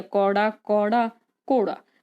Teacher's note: ਇਹਨਾਂ ਸ਼ਬਦਾਂ ਵਿੱਚ ਧੁਨੀਆਂ ਦੀ ਤਰਤੀਬ ਨਹੀਂ ਬਦਲਦੀ, ਸਿਰਫ ਪਿੱਚ ਬਦਲਦੀ ਆ